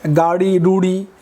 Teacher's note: এই শব্দগুলো তাড়না করে উচ্চারিত হয়, এই জন্য এগুলো তারণজাত ধ্বনি